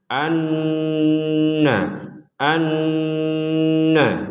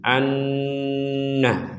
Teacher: di sini ada Nun bertasdid kita membacanya dengan dengungan An An jadi di rongga hidung kita itu berdengung